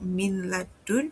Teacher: So let's look at some example in the word min ladun. Nun sakinah is followed by lam. So idgham bighunnah applies and the nun sound is merged into lam.